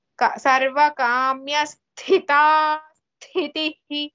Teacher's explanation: In both cases, sa has tha, Mahaprana tha with it